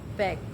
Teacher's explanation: Voice bilabial dan flow eh bergetar bibir atas dan bibir bawah saling bertemu dan letup.